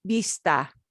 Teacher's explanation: these v words will sound exactly like the b words